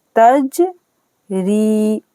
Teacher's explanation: ता जीम ज़बर तज, रा या ज़ेरी, तजरी। जीम पर करेंगे कलकला, रा को पढ़ना है बारीक। तज री और या साकिन से पहले जेर है, या मद हो रहा है, 2 सेकंड के लिए खींचेंगे।